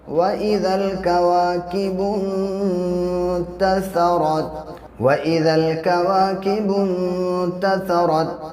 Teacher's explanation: واو کے اوپر زبر ہے، زبر کو جلدی پڑھیں، تھوڑا بھی نہ کھینچیں۔